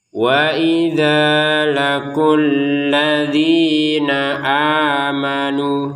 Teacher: Alladzina di sini dzi dua harakat, a dua harakat, nu dua harakat.